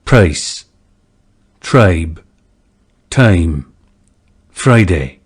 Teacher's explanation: next is the price and choice lexical sets this diphthong 2 had a centered onset and started with schwa or neutral vowel